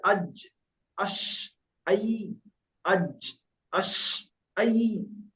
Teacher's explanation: জিভের মাঝখান উপরে লেগে উচ্চারণ হয়, ব্যাস, একদম সোজা ভাষা একদম। জিভের মাঝখান উপরে উপরে লেগে উচ্চারণ হয় জিম শিন ইয়া